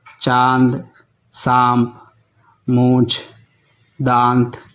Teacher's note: अनुनासिक ध्वनि है, जिसे नाक और मुंह से उच्चारित किया जाता है, जैसे चांद, सांप, मूंछ, दांत आदि।